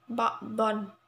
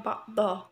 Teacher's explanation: hukum bacaan mad iwad ba'don ya, tapi kalau berhenti di akhir kalimat bacanya ba'dho ya.